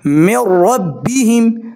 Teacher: ادغام خو به کیږي خو بغیر د غنه پوزې ته به आवाज نه بوزي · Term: ادغام بلا غنه